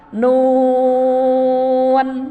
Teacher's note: Jadi ini nu baru akhirnya n. Nun 6 harkat, 6 ketukan.